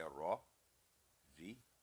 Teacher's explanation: تو را پر فتح ہے، پر کر کے پڑھیں گے